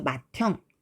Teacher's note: 드하고 흐를 합쳐서 트로 발음하네요